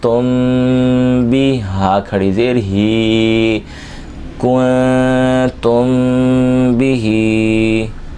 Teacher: کاف نون پیش کن تا میم پیش تم. اب یہاں میم ساکن میں غنہ کریں گے کیونکہ اگلا حرف جو آ رہا ہے وہ با ہے. یہاں اخفاء کا قاعدہ لگے گا، نون ساکن کے بعد تا آ رہا ہے اور تا میم پیش تم میں میم ساکن کے بعد اگلا حرف جو ہے وہ با ہے.